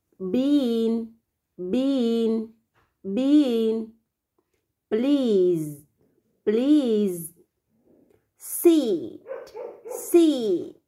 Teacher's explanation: Tuy nhiên là cái độ dài của âm y ấy, con cần kéo dài hơn.